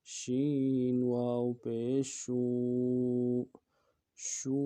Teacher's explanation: شین واو پیشو، واو مدہ ہے، اس کو بھی ایک الف مدار میں کھینچیں گے۔